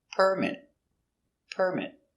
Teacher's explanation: It's a noun. The stress is on the first syllable.